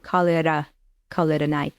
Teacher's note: we have this American flap T, call it a night, because T is between two vowels